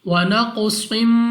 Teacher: صاد کو ہم نے موٹا پڑھنا ہے، منہ اور آواز کو کھول کر۔